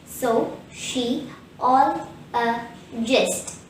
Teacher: the word sociologist has five syllables so she all a gist the third syllable all is stressed